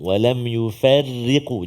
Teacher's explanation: Hati-hati huruf-huruf yang tarqiq ra, iaitu antaranya pada walam yufarriqu.